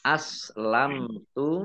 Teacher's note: mim sukun bertemu dengan huruf ta, bacaan izhar safawi dibaca jelas